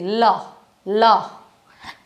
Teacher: ल बोला जाता है दांत और जीभ से, ल, तो दांत और जीभ को दंतस्य कहा जाता है।